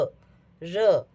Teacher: जैसे ही आप य बोलते हैं तो हमारी वायु हमारी जिह्वा के मध्य भाग को वहाँ टच करती है और वहाँ से वर्ण उत्पन्न करती है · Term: अंतस्थ व्यंजन